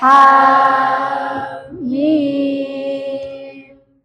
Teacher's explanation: Hanya dibaca 2 harokat, mimnya dibaca 6 harokat. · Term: mad lazim mukhaffaf harfi